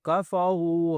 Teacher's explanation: ان الذین، نون پر غنہ کرنا ہے، لام سا ملانا ہے، ذال کو سافٹ کرنا ہے، ٹھیک ہے، اور تھوڑا کھینچنا ہے، کفروا، را کو موٹا کرنا ہے اور کھینچنا بھی ہے